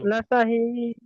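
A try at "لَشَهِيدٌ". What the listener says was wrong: লা শাহিদ, হুম, এখানে টান একটু বেশি হয়ে যাচ্ছে, একটু খেয়াল করবেন, ঠিক হয়ে যাবে। লা শাহিদ,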